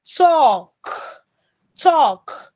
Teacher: makes it long such as you have in Talk That Talk the L is silent that letter L is silent